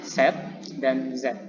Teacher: ujung lidah hampir menyentuh, jadi hampir menyentuh ridge. Nah, dia memberikan ruang sedikit, jadi bagian lidahnya itu turun sedikit untuk memberikan ruang udara.